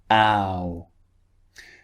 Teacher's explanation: Starts wide and finishes rounded.